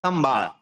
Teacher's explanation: ম কে পুরো উচ্চারণ করবো না, সমবাদ বলা যাবে না, সংবাদ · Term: অনুসারের উচ্চারণ